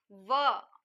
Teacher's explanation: ಹಲ್ಲುಗಳ ಸಹಾಯ ಮತ್ತು ತುಟಿಗಳ ಸಹಾಯದಿಂದ ಉತ್ಪತ್ತಿ ಆಗ್ತಕ್ಕಂತ ಒಂದೇ ಒಂದು ಅಕ್ಷರ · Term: ದಂತೌಷ್ಟ್ಯ